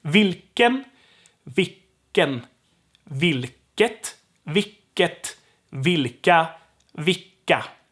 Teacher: So if L gets dropped, the K has to be extended. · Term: long K